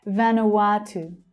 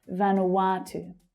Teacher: That third syllable is the stressed one.